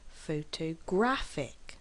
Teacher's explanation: Photographic has four syllables as well, but we stress on the third syllable. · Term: word stress